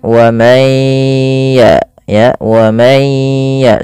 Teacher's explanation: jangan lupa digunnahkan, masukkan ke rongga hidung sambil ditahan. Wa may ya, 2 harokat baru lepas. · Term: idgham bi gunnah